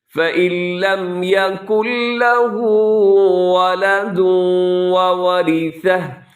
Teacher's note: فَإِن لَّم میں جو ہے ادغام ہے، نون ساکن کے بعد لام کی وجہ سے، ادغام بغیر غنّے کے. اسے فَإِن لم نہیں پڑھنا، بلکہ نون اس میں بالکل کیا ہوگا، ختم ہو جائے گا، سائلنٹ ہوگا، نہیں پڑھا جائے گا.